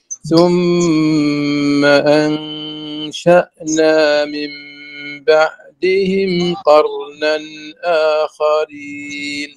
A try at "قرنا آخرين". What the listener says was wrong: لا ما فيش قرنا آخرين على طول إظهار.